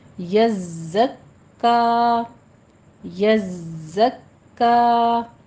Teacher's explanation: زائے کے اوپر سیٹی کی آواز لے کر آنی ہے اور تشدید ادا کرنی ہے